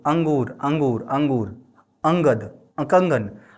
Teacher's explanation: हवा सिर्फ और सिर्फ नाक से निकलता हुआ नजर आएगा। मुंह से नहीं निकलता है। · अनुस्वार में क्या होता है हवा केवल केवल और केवल हवा नाक से निकलती मुंह से नहीं निकलती है।